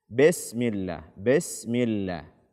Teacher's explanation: kesalahan pertama adalah membaca kasrah dengan imala